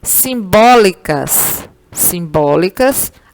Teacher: Simbólicas simbólicas, a sílaba mais forte é o bó. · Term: proparoxítona